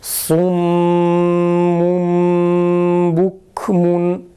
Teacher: Mime çeviriyoruz tenvindeki nunu ve bu şekilde okuyoruz.